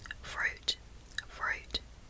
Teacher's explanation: the U it's kind of deep and it's like the back of my tongue is touching the roof of my mouth a lot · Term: Australian accent